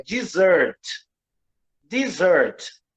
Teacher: Observe que o primeiro, a sílaba tônica é a segunda